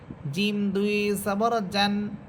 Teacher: জিম হবে জিম দুই জবর জান, জিহ্বার মধ্যখান উপরে তালুর সাথে লাগবে। জিম দুই জবর জান।